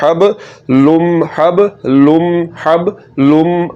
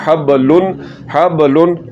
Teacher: इस तनवीन को आपने मीम के साथ मिलाना है